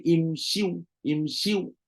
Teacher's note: kalau kita masih lagi nak kekalkan shin itu berbaris kasrah, maka bunyi dia akan jadi imshiu